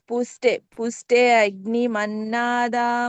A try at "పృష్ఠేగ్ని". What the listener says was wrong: ఇక్కడ పూ కాదు పృష్ఠేగ్ని అనొద్దు అగ్ని అనొద్దు పృష్ఠేగ్ని